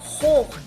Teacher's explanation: La H se puede pronunciar como una J aspirada, o sea, casi no se escucha.